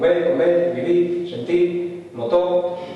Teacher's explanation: La pérdida de la R al final